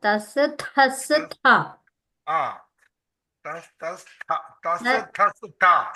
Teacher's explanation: ఇది తస్ ఫస్ట్ది మహాప్రాణం కాదు, అల్ప ప్రాణం. సెకండ్ది థస్ థస్ థ. మూడు థా. తస్ తస్ తస్ థ.